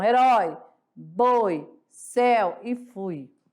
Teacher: vamos classificar como decrescente porque a primeira vogal é mais forte